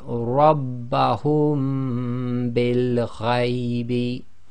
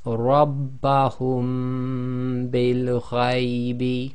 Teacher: So instead of saying rabbahum, taking a pause and then saying bil ghaibi, we say rabbahum bil ghaibi. So you're closing your lips on the hum, applying the ghunna, and releasing the lips by saying the bil